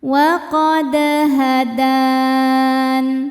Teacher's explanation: Kemudian ada qalqalah sugro karena ada huruf qalqalah dal ya yang sukunnya sukun asli dan berada di tengah-tengah bacaan. Cara bacanya memantul pantulannya kecil